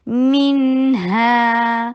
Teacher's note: میم کے نیچے کسرہ. ای کی ساؤنڈ کرنا بے حد ضروری ہے. منہا نہیں کہنا.